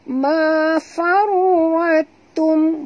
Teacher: Kita terus masukkan bunyi ra ni ke dalam ta. Ya, tanpa bunyikan ta. Jadi bacaan dia mafarwatum, bukan farwatum, bukan ta tapi ta, ya. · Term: idgham mutajanisain